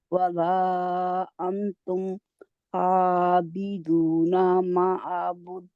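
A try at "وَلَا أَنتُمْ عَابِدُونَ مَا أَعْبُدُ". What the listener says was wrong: ولا انتم عابدون ما اعبد. اعبد با کو راؤنڈ کر کے, بالکل یہی آیت ہے, دوبارہ ریپیٹ ہو رہی.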